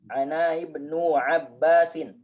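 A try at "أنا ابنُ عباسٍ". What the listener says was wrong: Ibnu tadi alifnya alif wasol.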